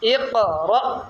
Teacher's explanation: ساکن حمزہ کو کس طرح پڑھتے ہیں؟ زور سے جو جھٹکا دے کر پڑھے نا